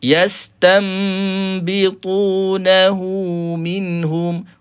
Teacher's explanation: Hu ni dia akan jadi dua harakat. Maksilah qasirah nama dia.